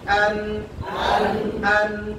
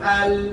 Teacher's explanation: জিহ্বা সংকুচিত হচ্ছে নুনের সময় লামের সময় একটু বিস্তৃত হচ্ছে